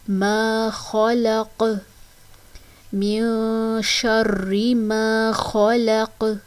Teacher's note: آگے آیت کمپلیٹ ہو رہی ہے تو قاف ساکن ہو جائے گا اور ساکن ہونے کی صورت میں اس پر قلقلہ ہوگا، آواز پلٹ کر آئے گی · خا کی ادائیگی موٹی کر کے کرنی ہے، یہ حروف مستعلیہ میں سے ہے.